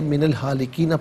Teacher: من میں نون پر زبر ہے، اسے الہالکین کے لام ساکن کے ساتھ ملائیں گے